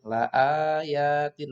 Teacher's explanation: Nah, la ayatin ini bacaan mat ya. A-nya dibaca panjang, ya-nya juga dibaca panjang. Mat tobi'i ya, mat tobi'i.